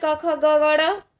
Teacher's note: क ख ग ड तो ये कंठ से होता है।